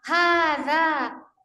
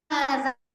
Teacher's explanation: ujung lidah kita bertemu dengan pangkal gigi seri gigi dalam yang di atas